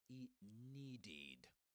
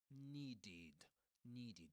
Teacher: long e sound at the beginning. Needed. And the last e is a short e.